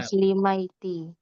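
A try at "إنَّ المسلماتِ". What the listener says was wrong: Kenapa Maiti pula? Dengarkan sekali lagi ya. Al-muslimatu. Coba masukkan inna. Innal. Kalau banyak perempuan, kemana ganti baris ke atasnya kan inna ini mengataskan baris. Tapi kemana dibuatnya yang di atas itu kan kalau tunggal.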